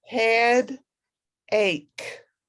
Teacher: that ch is the k sound and you don't say the e